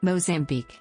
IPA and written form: ˌmoʊzæmˈbiːk (Mozambique)